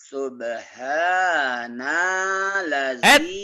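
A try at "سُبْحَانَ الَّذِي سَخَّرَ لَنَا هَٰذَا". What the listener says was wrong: Kenapa jadi panjang? Subhanal, nal, kanal barat, kanal timur. Subhanal. Bapak sudah lumayan, cuman di subnya kayak Bapak kayak kesel. Syubi. Jangan, sub biasa aja. Sub kan bukan napas, nggak pakai napas, Pak. Ini sub, bagian-bagian itu dalam kantor sub A, sub B gitu, Pak. Bapak kan syubi.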